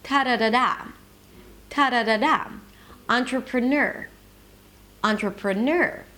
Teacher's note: Okay, the pitch is higher, it's a little longer, the syllable is a little longer, and it's louder. There is a secondary stress at the beginning, on. Then in the middle we have two weak stresses. So actually the music is something like ta-da-da-da, ta-da-da-da, entrepreneur, entrepreneur.